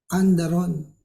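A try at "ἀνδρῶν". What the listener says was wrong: So 2 syllables, and then dron. Yeah, like the one, flying cameras, no? Drones, no?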